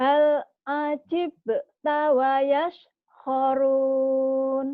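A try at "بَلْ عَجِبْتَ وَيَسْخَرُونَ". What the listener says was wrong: tahu Ibu salahnya di mana? Ibu seperti tadi ngomongnya bukan bal tapi hal ya. Itu karena efek dari mulut kurang ngebuka.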